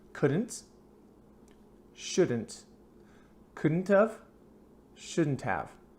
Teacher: if you slow down will say couldn't have shouldn't have but in fast English conversation you're gonna hear the of sound